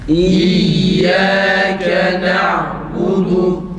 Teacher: Ötüreler o çıkmasın yalnız. Ü de değil, o da değil.